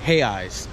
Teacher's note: so brazilian currency is in hay ice it's spelled r-r-e-i-s but in portuguese you don't pronounce the r so you say it like hey eyes the r sound like an h